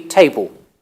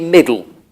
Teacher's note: and table would be table middle would be middle it is it is called L vocalization the L is becoming a vowel